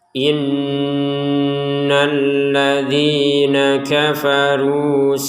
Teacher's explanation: Nun bertasdid ini harus kita baca dengan dengungan 100%